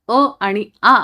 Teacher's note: कंठातून उच्चार होणारे स्वर अ आणि आ आहेत